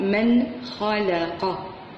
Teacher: هنا عندنا الإظهار، نظهر النون الساكنة تقرأ من خلق.